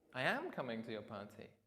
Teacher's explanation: emphasised the am coming instead of saying I'm coming to your party.